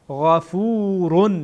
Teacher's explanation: غین از قسمت ابتدای حلقه میشه